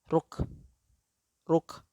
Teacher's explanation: Ketika kita menempelkan lidah bagian dalam, ya, pangkal lisan atau pangkal lidah dia tidak terlalu ditekan sehingga udara keluar lagi